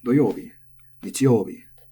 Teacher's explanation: when we get to the days of the week, we're in luck because they all have the accent. 3 from the end.